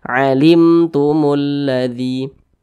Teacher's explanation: di depannya bukan huruf ba di depannya bukan huruf mim maka hukumnya adalah izhar syafawi maka dibaca jelas tidak berdengung